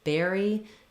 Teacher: the letters U-R are saying the air diphthong